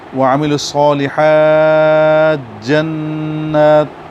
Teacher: اب تا کو جیم بنا کے اس پر شد پڑھیں تو یہ ادغام کہلائے گا۔